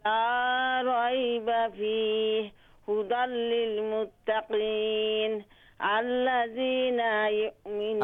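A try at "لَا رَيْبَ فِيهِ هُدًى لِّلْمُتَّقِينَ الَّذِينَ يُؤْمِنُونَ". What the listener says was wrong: अच्छा नून लंबा है नून लंबा है अल्लज़ीना यू नून टा लंबा है।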